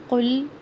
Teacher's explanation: قاف موٹا ہے، لام ساکن ہلے نہیں